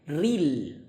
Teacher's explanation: Jangan rel. Ril, bukan rel tapi ril ya. Kasrohnya sempurnakan.